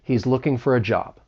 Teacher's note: Now this is a statement. So you have that falling intonation at the end.